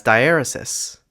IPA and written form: daɪˈɛɹəsɪs (diaeresis)